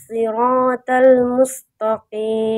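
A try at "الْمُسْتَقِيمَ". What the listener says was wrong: nah jangan mustaqim ta huruf ta tipis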